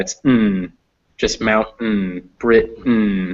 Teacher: It's just a n, like there's no vowel, just an n.